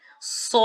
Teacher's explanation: So alif mad is followed by an original sukoon. By stretching alif mad with 6 counts, we will recite this example like this. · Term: Maddul Lazim